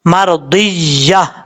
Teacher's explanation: اب اس کے بعد یا کے بعد 2 زبر ہے تا کے اوپر، اگر آپ ملا کے پڑھیں گے تو مرضیۃً فادخلی پڑھا جائے گا، لیکن آپ یہاں پہ سٹاپ کریں گے تو وقف کرنے کی صورت میں یہاں پر تا کو ہا سے بدل کر پڑھیں گے